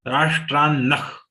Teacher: The visarga has to be pronounced as kha.